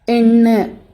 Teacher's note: எண்ணு அப்படின்னு சொல்கிறப்ப காற்று வாயில் வராமல் மூக்கு வழியாக வெளியேறும். இது மூக்கொலி.